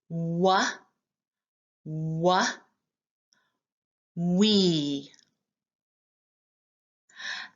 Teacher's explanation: We use two lips that are rounded to say W